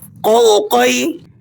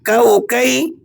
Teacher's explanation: یہ جو نقطوں والا قوف ہوتا ہے یہ موٹا پڑھا جاتا ہے، اور یہ بغیر نقطوں کے جو کاف ہے اسے آپ نے باریک پڑھنا ہے